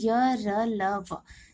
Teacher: तो जिन वर्णों का उच्चारण स्वर तथा व्यंजनों के बीच का सा होता है उन्हें अंतस्थ व्यंजन कहते हैं और इनका उच्चारण जीभ, तालु, दांत और होठों के निकट आने से होता है, परंतु जीभ मुंह के किसी भी भाग से पूरी तरह से स्पर्श नहीं करती है